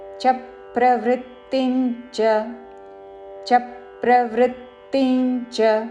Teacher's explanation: చా పక్కన సంయుక్తాక్షరం ఉన్నది కాబట్టి చా మీద ఆఘాత పలుకుతూ చ ప్రవృత్తించ చ ప్రవృత్తించ. చివరిలో చ హ్రస్వము పొడిగించకూడదు